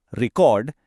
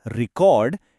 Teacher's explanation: If you stress the second syllable, record, it's a verb, an action. Please record this. But if you stress the first syllable, record, it becomes a noun, a thing. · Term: the stress shift